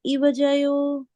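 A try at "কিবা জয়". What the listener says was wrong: Kibajayo. Kibajayo is a proper word. Sometimes people ignore Kiba, ka. I'm not a Bengali, but Kiba has to be there.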